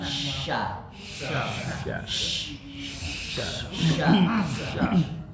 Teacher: Sya harus tersebar nafasnya desisnya harus melebar